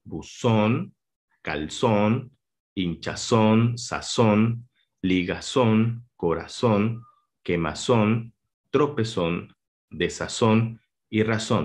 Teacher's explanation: la sílaba tónica que es la que más suena están en la última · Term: palabras agudas